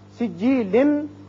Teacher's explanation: نون ساکن کے بعد سین جو کہ حروف اخفا میں سے ہے، یہاں اخفا ہوگا